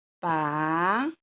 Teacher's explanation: Nosso encontro vocálico são de 3 vogais que não se separaram com a separação das sílabas. Então, eu vou classificá-la como tritongo, tá?